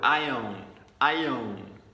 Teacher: you notice how the I own, it sounds like one word